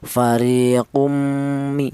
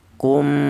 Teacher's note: bighunah itu idghamnya itu dibaca juga ada dengungnya yaitu dua ketukan. Fariqu iku kum itu ghunah ya. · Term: idgham bighunah